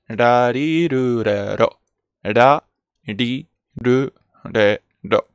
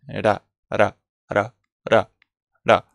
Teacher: aunque sea la fila de la R, se pronuncia como una R muy flojita.